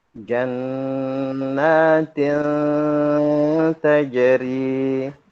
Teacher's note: Itu adalah ikhfa nun sukun tanwin bertemu dengan harfu ta.